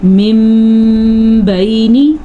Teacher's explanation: آپ نے میم پڑھنا ہے، نون نہیں پڑھنا، اور آپ نے غنہ کرنا ہے